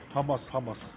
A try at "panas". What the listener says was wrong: Not hamas, panas ya. Panas. This is panas, not hamas. Dia selalu kebiasaan bilangnya hamas. Well, panas.